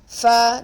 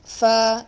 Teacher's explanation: The fa is a letter pronounced from the lip, your upper tooth, the upper front tooth, and its edge will be touching the lower junction of the inner part of your lower lip. Okay, the wet part or the junction of the lower lip.